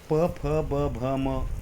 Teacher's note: यांच उच्चारण करताना ओठांना लागतं ओठ जोडले जातात म्हणून त्यांना ओथ्याहा म्हटलं जातं ठीक हा बहुवचन आहे